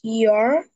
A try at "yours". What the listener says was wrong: Again, with letter S, yours.